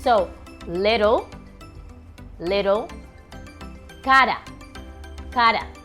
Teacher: It's just a little tap of your tongue into your palate and it's letting some air through. So little, little, cara, cara. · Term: soft R